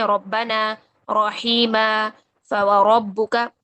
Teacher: را موٹی پڑھنی ہے، اور اس کو موٹا کرنے کا طریقہ کیا ہوتا ہے کہ صرف اور صرف زبان کی جڑ اوپر کی طرف اٹھ جاتی ہے